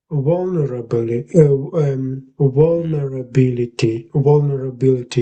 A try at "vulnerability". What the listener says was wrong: Yeah, that's basically it, I would say. Yeah, yeah, you got it, I would say.